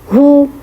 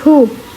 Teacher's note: for pesh, you have to make o sound like u, hu. You have to make a round, you can say, circle of your lips.